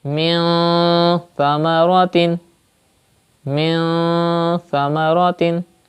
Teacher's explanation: When you pronounce Noon Sakin, this Noon Sakin, you will take the sound into your nose. You will read it with Gunna, like that.